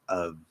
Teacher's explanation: you can start in the V and then drop the voice, and it'll actually end in an F. So like of, that's fine. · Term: partial end of word devoicing